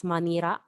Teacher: Manila City is Manira since they do not have letter L or sound L